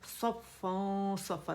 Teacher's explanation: ٹھیک ہے، پھر صفا، صا موٹا لیٹر، اطباق والا لیٹر، زبان تالو سے لپٹ جائے گی